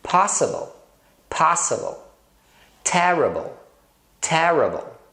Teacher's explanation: Em muitas palavras o I tem o som do schwa, que é um A. Olha só, possible, possible, terrible, terrible.